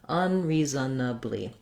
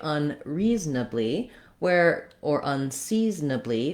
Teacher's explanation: Or you can say unreasonably, or unseasonably, where that Z is going to jump a little bit more on that second syllable, and then the N is going to start the nably syllable, and that O syllable is basically just going to get dropped